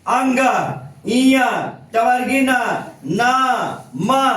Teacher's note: ये सब व्यंजन जो है नाक से बोला जाता है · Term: नासिक्य व्यंजन